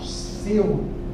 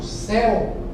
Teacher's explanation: Quando eu falo seu, é fechado. Seu, quando eu falo céu, é aberto. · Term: ditongo aberto